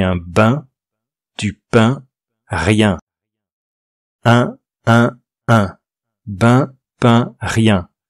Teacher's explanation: C'est comme un U ou un I qu'on prononce pareil avec le nez. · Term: voyelles nasales